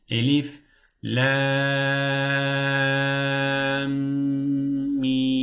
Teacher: Buradaki lamı bir saniye tutacağız. Sonra mim diye tekrardan uzatacağız. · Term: şeddeli mimler